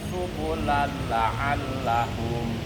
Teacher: Apabila nun mati dan tanwin bertemu huruf lam dan ro, harus diidghamkan, namun bacanya tidak boleh ditekan. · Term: idgham bila guna